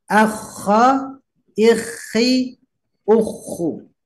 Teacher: Ikhi seperti ngorok karena menggunakan laklakan. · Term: huruf kha